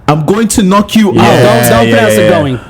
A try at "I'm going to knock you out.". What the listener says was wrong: Don't pronounce it going. Don't pronounce it going.